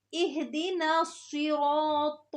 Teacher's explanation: صاد کو منہ بھر کے اور سین کو باریک آواز میں پڑھنا ہے